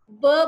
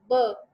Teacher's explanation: जैसे हम ब बोलते हैं, ब, तो ब में क्या होता है, हलक से आवाज निकली, लिप्स जो है वो आपस में मिल गए, आवाज जो है वो स्टॉप हो जाती है